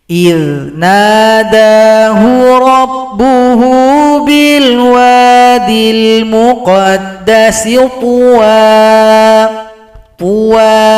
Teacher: Cara berhenti di sini, puan menjadi pua, hilangkan salah satu harokat, panjangkan dua ketukan. Mad niwat. إِذْ نَادَاهُ رَبُّهُ بِالْوَادِ الْمُقَدَّسِ طُوًى panjang dua ketukan.